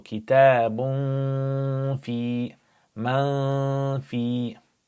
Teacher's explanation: you pronounce it with ikhfa, nasal sound